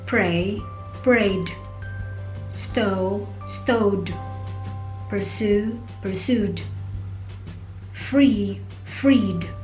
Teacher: The D and ED are also pronounced D if the verb ends with a vowel sound